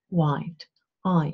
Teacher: you open up your mouth more for standard English white eye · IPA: /aɪ̯/